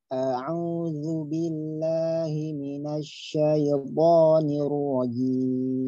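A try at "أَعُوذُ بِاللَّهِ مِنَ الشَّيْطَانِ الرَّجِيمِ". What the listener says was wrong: Nah, jangan minasyaiton. Ingat, ya itu tidak boleh mantul. Ya. Sering terjadi ya pada lafaz syaiton, ya itu mantul. Syaiton, ya, nggak ada pantulan pada huruf ya. Sifatnya lin, ya. Syai, ya. Syai, ya. Jangan syaiye. Nah, itu keliru.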